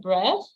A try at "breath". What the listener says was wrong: you pronounce it as bread, like D, as if it's a bread that you eat, you know.